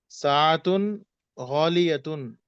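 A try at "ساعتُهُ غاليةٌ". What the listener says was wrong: साअतु हु है, हु भी लगा हुआ है दोनों में। उसकी घड़ी साअतु हु, उसकी घड़ी।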